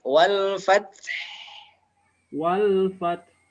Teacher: Wakafnya berarti diganti sukun haknya. Wal fath. Wal fath. Haknya mengalir suaranya.